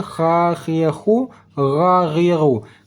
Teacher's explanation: Nah, ini huruf kha dan huruf ghain letaknya di ujung kerongkongan.